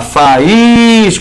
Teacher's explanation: O I é a sílaba tônica, está com S na mesma sílaba, e é a segunda vogal do hiato.